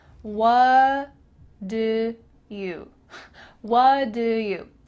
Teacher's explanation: The T in what is cut out, and instead it's replaced by the word do, which is linked together.